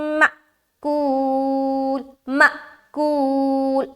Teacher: یہاں پر ہم حمزہ ساکینہ کا جھٹکا دیتے ہیں